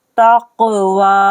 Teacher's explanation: ता कौफ ज़बर तक, वाव खरा ज़बर वा, तक़वा। काफ को पढ़ना है कलकला के साथ, क्योंकि काफ हुरूफ कलकला है